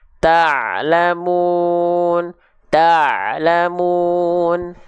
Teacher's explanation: makhraj huruf ain itu dilafalkan dari wastul halqi. Wastul halqi itu artinya adalah tengah tenggorokan. · Ya, ini bagian katup epiglotis kita. Jadi ketika melafalkan ain itu dia neken sedikit ke dinding tenggorokan.